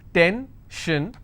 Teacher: Tension, I will stress on ten.